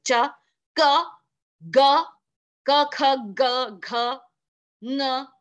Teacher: you are completely closing the sound and you are releasing it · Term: प्लोजिव्स